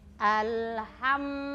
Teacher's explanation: kalau mim ada di mana berada di dua bibir bibir ya Jadi huruf mim itu ee dia syafawi jadi berada di dua bibir